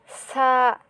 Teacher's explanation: সা এটা যখন উচ্চারণ করবেন তখন জিহ্বার আগার উপরের সামনের দুই দাঁতের আগার সাথে লাগিয়ে